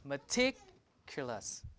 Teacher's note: The K is in an unstressed syllable, meticulous. Right? So K is not aspirated. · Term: Unaspirated